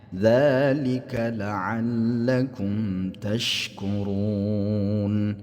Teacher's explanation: Di sini dzalikanya panjang 2 dua harakat ya.